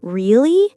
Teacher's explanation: If I say it with a rising tone, really, it's a question, showing surprise or disbelief.